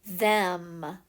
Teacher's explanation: when I say that, my mouth is about halfway open. So I believe that is a short E sound.